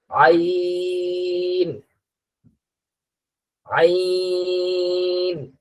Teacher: হলকের মাঝখান, হলক বলা হয় গলাকে, এই গলার এই মাঝের জায়গা থেকে উচ্চারণটা হবে আইন।